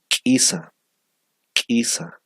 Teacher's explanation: Aquí tenemos la explosiva, ¿no? La glotalizada K